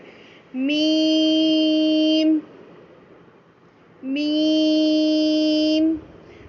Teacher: हुरूफ शफ़ाविया जो है वो होठों से ही अदा किया हमने मीम, लेकिन दरमियानी आवाज़ कहाँ गई, खैशोम में गई